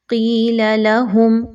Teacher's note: قاف کو موٹا کر کے پڑھیے